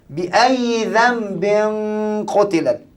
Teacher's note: pertama hendaklah ditukarkan bunyi Nun kepada bunyi mim jadi satu Nun tukar jadi mim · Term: iqlab